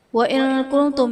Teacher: نون ساکن کے بعد حروف اخفاء میں سے کاف ہے تو یہاں پر اخفاء کا قاعدہ ہوگا، یعنی نون ساکن میں ہم غنہ کر کے پڑھیں گے۔